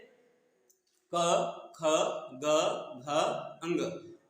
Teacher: कंठ से होता है, क्योंकि जीभ बिल्कुल नीचे स्पर्श होता है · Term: क वर्ग